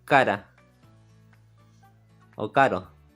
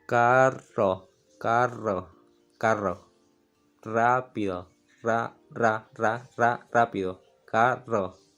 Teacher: Miren, cuando yo pronuncio la R simple, por ejemplo, yo digo cara o caro. Mi lengua en este caso está tocando la parte delantera del paladar y vibra una sola vez.